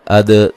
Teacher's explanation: موٹا ادا کریں گے، ان نون ساکن کا اظہار ہے، اد دال پہ قلقلہ کریں گے